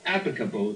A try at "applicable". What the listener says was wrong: it's the L that you're not playing right. It's the same combination that we just dealt with a minute ago. The P, only in this case not going to a T, but going to an L, going from the lips to the tongue action. Applicable, applicable.